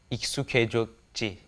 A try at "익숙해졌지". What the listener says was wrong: But be sure to say K instead of he.